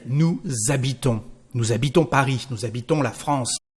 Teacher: The letter S becomes the sound Z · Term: liaison